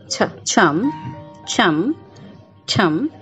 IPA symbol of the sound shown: tʃ